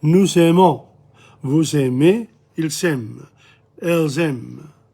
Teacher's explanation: a Z sound is heard between the pronoun and a following verb, like a Z. This is called a liaison.